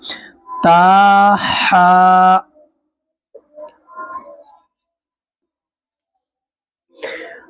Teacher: ہا کو ادا کریں گے گلے کے بیچ میں سے